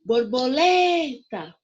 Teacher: o lê eu falo mais forte o mais alto tá bom então lê é a sílaba tônica da palavra borboleta